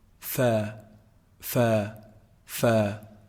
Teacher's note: combining the edge of the upper incisors when they hit down on the inside part of the lower lip